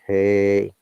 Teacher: The one my voice goes down, like, hey, is called down tone or falling tone.